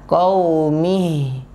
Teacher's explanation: Ini ada sengau-sengau begitu ya. Kalau kita dengarkan ada sengau-sengau, dan itu menandakan masuk hidung.